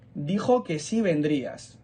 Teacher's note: el sí, como es tónico, coge fuerza y no se junta con vendrías.